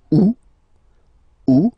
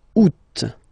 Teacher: two options are acceptable in French the first one you don't pronounce the final t second one you pronounce it